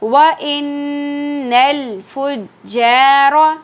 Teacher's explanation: نون مشدد غنہ ہوگا، لام ساکن پہ قلقلہ نہیں کرنا